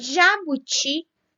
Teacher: E o bo de bolo é a penúltima sílaba. E jabuti tem a última sílaba como a sílaba tônica, o ti.